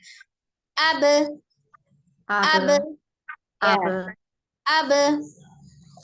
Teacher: Jadi ketika diucapkan sukun, kebetulan ba termasuk di dalam catatan yang huruf qalqalah, maka dia harus dipantulkan.